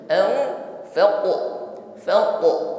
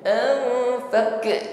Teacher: huruf q sukun Qalqalah pantulkan bunyi huruf q jangan ditahan